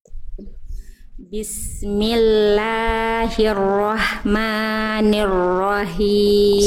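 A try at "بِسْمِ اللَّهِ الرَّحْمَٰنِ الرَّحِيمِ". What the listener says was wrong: Bagian ini masih him, jadi masih kurang berbisik si hak kecilnya.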